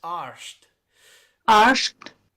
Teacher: Gaelic inserts a sh sound into the combinations RD and RT.